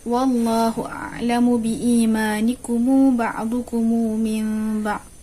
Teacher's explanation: Bacaan yang ketiga oleh Imam Warsh dengan membaca izhar pada a'lamu, 4 harakat mad badal biimanikum dan iskan mim jamak